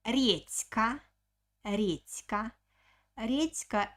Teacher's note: like so let the becomes voiceless so the turns into because it stands in front of k is voiceless consonant that's why letter d also becomes voiceless